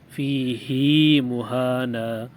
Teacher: نواں کلمہ ہمارے پاس ہے فیہ مہانا، اس میں اس بات کا دھیان رکھیں گے کہ فیہ کی ہا کو کھینچ کر پڑھیں گے، جو ہم نے کھڑی حرکات کو پڑھنے کا طریقہ پڑھا ہے، یعنی ایک الف کے برابر کھینچنا، فیہ مہانا۔